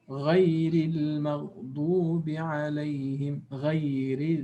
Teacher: if there is a kasra under the Ra. Then in this case, the Ra is not strong. It becomes empty mouth. We say muraqqaqa with tarqiq.